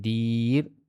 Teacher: Di mudah pengucapan dia dan mestilah dipanjangkan dua harakat. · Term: mad arid li sukun